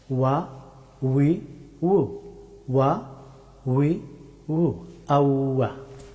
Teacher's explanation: ওয়াও হরফটি উচ্চারিত হয় দুই ঠোঁটকে রাউন্ড করে